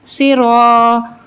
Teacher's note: سین زیر سی، رو الف زبر رو، سی رو. اب یہ رو کے اوپر زبر ہے تو اس کو ہم پر پڑھیں گے، یعنی موٹا پڑھیں گے